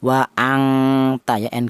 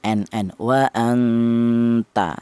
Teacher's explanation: yang lebih dominan atau yang lebih tinggi itu tingkat kesamarannya dibanding dengungnya. Ada dengung sedikit yang lebih banyak atau yang lebih tinggi ada tingkat kesamarannya. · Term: ifa a'la